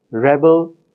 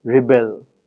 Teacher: The words rebel, rebel, similarly, are different because of their stress. In the noun, the stress falls in the first syllable, and in the verb, rebel, the stress falls in the second syllable.